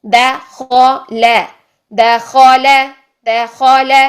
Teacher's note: अब बारीक, दो बारीक हरूफ के दरमियान एक मोटा हर्फ आ गया है खौ। हमने खौ को मोटा रखना है औ की साउंड में, लाम को और दाल को बारीक रखना है।